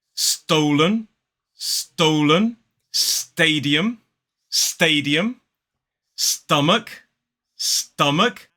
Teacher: when it comes immediately after a s sound that s sound for many native speakers has an effect on the T which makes it sound slightly more like a D sound